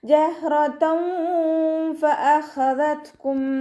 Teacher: തെൻവീനിന് ശേഷം ഇഖ്ഫായിൻ്റെ അക്ഷരമായിട്ടുള്ള ഫാ വന്നു. തെൻവീനിലുള്ള നൂനിൻ്റെ സൗണ്ടിന് നമ്മൾ മറച്ചു വെക്കണം.